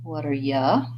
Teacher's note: And that's a vowel schwa. So the clear vowel u, because it's unstressed in this sentence, becomes more of a ya instead of you